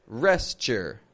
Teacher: We're taking that O and U, we're reducing it, and we're taking the word rest and blending it with the y